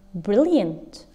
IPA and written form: ˈbrɪliənt (brilliant)